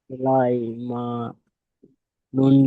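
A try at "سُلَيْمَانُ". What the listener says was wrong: নুন পেশ না ওটা?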